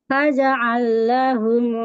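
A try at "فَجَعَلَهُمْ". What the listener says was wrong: Ini tidak ada tasdidnya. Faja'alahum.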